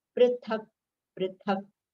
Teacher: Last letter k is halanta, so we have to take it quickly.